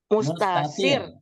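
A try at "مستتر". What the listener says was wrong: Mustatir. Itu titiknya 2. Taknya 2. Domirun mustatirun.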